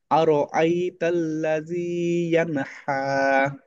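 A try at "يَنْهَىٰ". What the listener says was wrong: এই হা ডাববে না। ইয়ান হা, আমরা হাসি না হা হা করে ওই রকম ভাবে। ইয়ান হা, ছোট হয় এটা। হ্যাঁ, গোল হা এরকম হয়।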